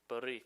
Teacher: You got to roll the R a little bit.